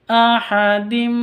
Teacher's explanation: Tanwin ahadin min, tanwin bertemu dengan mim, masuk ke mimnya terus ditambah dengan dengung karena idgham bi gunnah